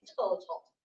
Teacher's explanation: we tend to emphasize to and unemphasize tall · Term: qualitative meter